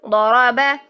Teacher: ضرب، ٹھیک ہے۔ با میں کوئی بھی کوالٹی نہیں ہے موٹائی کی، بالکل باریک ہے، نہ زبان کی جڑ اٹھانی نہ زبان کا درمیان اٹھانا ہے، تو وہ نہیں کریں گے، ضرب۔